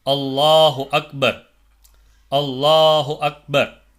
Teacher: உள்ள லாமை பொறுத்தவரைக்கும் அதுக்கு முன்னாடி உள்ள எழுத்து பத்தஹோ அல்லது லம்மோ பெற்றிருந்தால் அந்த அல்லாஹ் அப்படின்ற வார்த்தையில இருக்கக்கூடிய லாமை கனமாக உச்சரிக்க வேண்டும்